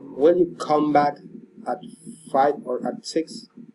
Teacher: Alternative question. Rising and falling intonation.